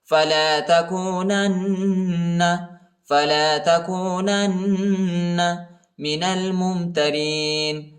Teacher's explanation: من ربک فلا تکونن، پہلے والی نون کو دوسرے نون کے ساتھ ملائیں گے، دوسرے نون پر شد آیا ہے اور غنہ بھی کریں گے